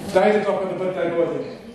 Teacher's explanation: Every time there was going to be a nasal consonant, the nearest non-nasal equivalent came out. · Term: blocked nose